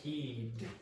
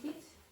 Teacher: This one here, this one here is a voiced consonant. So there's a vocalization or vibration of the vocal cords with D. T has no vibration.